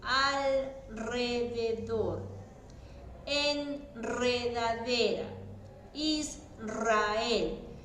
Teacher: Aunque vaya acompañada de las consonantes L, N o S, siempre suena fuerte.